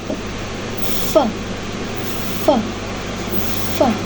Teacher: Bibir bawah sebagai artikulator aktifnya dan gigi atas sebagai artikulator pasifnya. Diucapkan dengan posisi bibir bawah mendekati gigi atas dan membentuk celah sempit. · Bunyi yang keempat yaitu bunyi fe merupakan bunyi labio dental yang melibatkan bibir bawah dan gigi atas. Bibir bawah sebagai artikulator aktifnya dan gigi atas sebagai artikulator pasifnya. · Diucapkan dengan posisi bibir bawah mendekati gigi atas dan membentuk celah sempit. Ini merupakan bunyi geseran yang dimana ketika dilafalkan sangat mudah memproduksi bunyi yang bising.